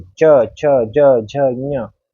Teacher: तो हमारी जो जीवा है वो कहाँ लगेगी, हमारी जो जीवा है वो हमारे तालू पर लगेगी